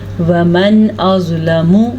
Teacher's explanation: نون کو ظاہر کر کے پڑھا ہے کیونکہ نون ساکن کے بعد حرف حلقی میں سے حمزہ آ گیا ہے، اس لیے ہم نے نون کو ظاہر کیا ہے۔